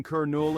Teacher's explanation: the stress falls on the first syllable